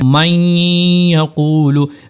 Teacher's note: ادغام کے ساتھ ساتھ غنہ بھی ہوگا۔ غنہ کیا کہتے ہیں؟ کہ اس آواز کو تھوڑی دیر جاری رکھنا، اس کے اندر اس کو تھوڑا رک کر ادا کرنا، جیسا کہ یہاں پر ہے من یقولو۔